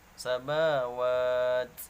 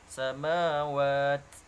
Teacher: apabila diwaqafkan atau disukunkan maka dibacanya harus hamas ya, ada desisnya.